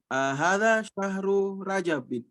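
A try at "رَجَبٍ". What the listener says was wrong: Rojabin. Ya, orang Makassar bilangnya Ra gitu. Kalau nyebut Ra itu jadi Ra.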